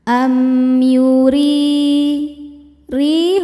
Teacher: Am yuri ri hukumnya mad thobi'i zohiri sebab ada ya sukun sebelumnya baris kasrah. Cara bacanya huruf ro dipanjangkan dua harakat. · Huruf ro dibaca secara tarqik karena barisnya di bawah yaitu baris kasrah. Cara bacanya ro dibaca tipis. Am yuri ri hukumnya mad thobi'i zohiri sebab ada ya sukun sebelumnya baris kasrah.